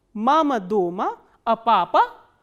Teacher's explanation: in the first part the intonation starts from the medium pitch, it comes down and then again it rises up and then comes down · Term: fourth intonational construction